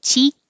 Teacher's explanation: the vowel is very high